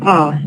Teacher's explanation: front or back the BL low sounds are those in which the body of the tongue is lowered with respect to the neutral position